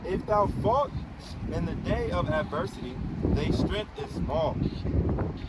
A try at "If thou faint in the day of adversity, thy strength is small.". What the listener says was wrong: fall, read that again. You didn't say faint. You said fall.